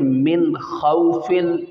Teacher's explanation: اب یہاں پہ بھی دیکھیں من خوفن، یہاں پہ اظہار ہو رہا ہے، نون ساکن کے بعد حروف حلقی میں سے خا آ رہا ہے، ظاہر کر کے پڑھیں گے